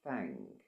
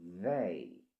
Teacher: So there's a difference between they and thank you or thank. So you hear the word thank, it's a bit silent, but they has a buzzy sound